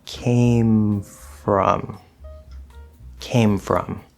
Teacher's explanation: they're both clearly individually pronounced with no sort of blending or moving over or anything like that